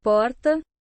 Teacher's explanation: em algumas regiões interioranas puxa-se também o r